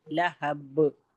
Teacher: लहब पे आयत करेंगे तो कलकला करेंगे।